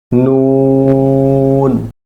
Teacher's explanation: 9 number মাখরাজ, জিহ্বার আগা তার বরাবর উপরের তালুর সঙ্গে লাগাইয়া